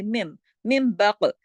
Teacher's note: مم بقلیہا, مم نون ساکن کے بعد با آ گیا, مم بقلیہا, نون ساکن کے فوراً بعد با آیا. یہاں بھی اقلاب کا قاعدہ ہو گیا, نون کی آواز نون نہیں رہی, من نہیں رہی, مم ہو گئی